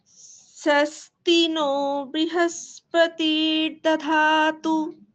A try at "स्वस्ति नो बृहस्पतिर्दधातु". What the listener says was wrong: ব্রু ব্রি বলা যাবে না। বয় রিতে ব্রি উচ্চারণ হয়, কিন্তু যখন আপনারা এইভাবে উচ্চারণ করবেন, এই কৃষ্ণ যজুর্বেদের মতন উচ্চারণ করবেন, সেখানে রিকারকে রু উচ্চারণ করতে হবে। ব্রু।